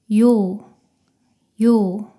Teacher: 이로 시작해서 빠르게 오로 이어서 발음합니다.